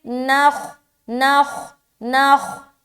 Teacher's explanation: نون کو خا سے ملا دیا، نخ. نخ خا موٹے حروف میں سے ہے، لہٰذا جیسے نون خا سے ملے گا خا کا جو موٹا پن ہے وہ ظاہر ہوگا.